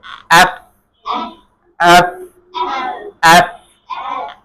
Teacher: এফ নিচের ঠোঁট আর উপরের দাঁত, উপরের পাটির দাঁত লাগবে।